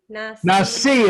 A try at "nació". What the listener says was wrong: Nació, it's I-O ending.